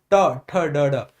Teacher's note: मूर्दा कहते हैं तालू से जस्ट ऊपर वाले भाग को ट ठ ड ड और जिव्या एकदम से नीचे गिरती है